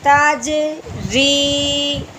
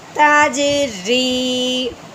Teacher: جیم حروف قلقلہ اس لیے ہلایا